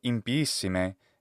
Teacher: she adds a glottal stop between the two letters i